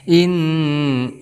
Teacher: ada nun yang bertasdid, maka kita hukumi sebagai gunnah musyaddadah. Kita dengungkan 2 harokat, boleh sampai 3 harokat.